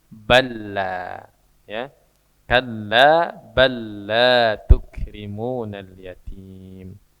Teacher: Lam sukun atau lam tak berharokat bertemu dengan lam yang berharokat. Maka huruf yang pertama dimasukkan ke huruf kedua.